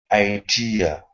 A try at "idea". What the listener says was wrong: Okay, give me a D instead of tia. D. Idea.